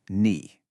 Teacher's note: It has that classic falling then rising third tone.